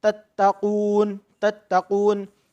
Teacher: مد عریض کا، مد عریض ہوگا اور وقف میں وقف بالاسکان ہوگا. تو مد عریض کو بھی 3 الف کے برابر کھینچ کر پڑھنا ہے